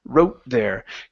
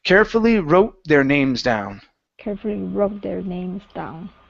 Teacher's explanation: Okay, so with your tone, the tone of that O needs to come up right before you get to the TH